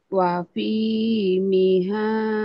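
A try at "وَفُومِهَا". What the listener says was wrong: wafu bukan wafi Wafu miha. Wafu wafu miha wa adasiha wa basoliha.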